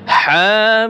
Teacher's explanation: হা 1 আলিফ টান হবে, মিম 4 আলিফ টান হবে। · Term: মদ্দে লাজেম হরফি মুখাফফাফ